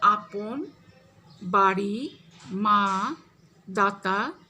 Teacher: বাংলায় আধ্বনি একটি বিবৃত স্বর। এর উচ্চারণ হ্রস্ব ও দীর্ঘ দুই হতে পারে। এর উচ্চারণ অনেকটা ইংরেজি ফাদার ও কাম শব্দের আয়ের মতো।